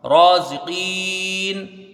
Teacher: را کو ایک الف کی مقدار کھینچ کے پڑھا جائے گا · زا کے نیچے زیر جلدی پڑھا جائے گا، قاف یا زیر کی، یا مدہ اس کو کھینچ کے پڑھیں گے. آگے نون ساکن ہے وہ حالت وقف تو یہاں مد عارض ہے.